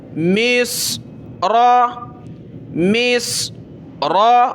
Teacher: میم صاد زیر مص، را زبر را، مص را، مص را، را پڑھیں، اس کو را، مص اور را نہیں پڑھیں کیونکہ باریک نہیں پڑھنا، موٹا کر کے پڑھنا ہے کیونکہ را کے اوپر زبر ہے